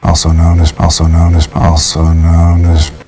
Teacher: The word as, in this case, the S's are pronounced as a Z.